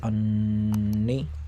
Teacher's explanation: یہاں پر نون مشدد ہے، لہٰذا یہ ایک الف کے برابر کھینچ کر اور ناک سے غنہ ہو کر پڑھا جائے گا، جیسے انا۔ اس کے بعد انی۔